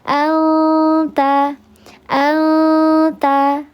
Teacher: Nun sukun menghadapi huruf ta dibacanya disamarkan disertai dengan ghunah tiga harakat namanya adalah ikhfa hakiki yang akra. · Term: ikhfa hakiki yang akrab